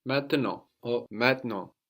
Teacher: we have the final T totally silent as well